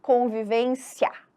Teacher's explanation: Porque engole o I. Então, o I ele é mais fraquinho. O que fica mais perceptível, o que predomina é o A. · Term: ditongo crescente